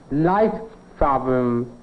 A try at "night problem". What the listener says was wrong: No, it's not a light problem. L.